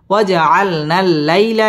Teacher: ঠোঁট গোল করে উচ্চারণ করতে হবে ওয়াজআলনা লাম তাসদীদ ওয়ালা হরফ লাই জবরের বাম পাশে জজম ওয়ালা ইয়া লিনের হরফ তাড়াতাড়ি পড়তে হবে